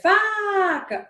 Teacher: Se eu disser faca, onde foi que eu passei mais tempo? A sílaba tônica é fá.